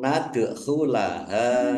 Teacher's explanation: Dal sukun bacaan qalqalah dibaca memantul ditampakkan pantulannya. Nad khula ha fathah alif mad thobi'i panjang dua harakat.